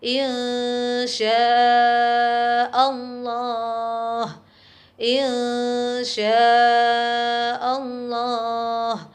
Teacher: sukun bertemu dengan Shin misalkan iye syaa Allah ilmu Syaikh Allah nun sukun masih tetap terdengar suara samar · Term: bacaan Ikhfa